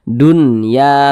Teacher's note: Maka dinamakan izhar mutlak, bukan idgham bi gunnah. Maka izhar dibaca jelas, tidak berdengung, pendek saja. Dunya, begitu.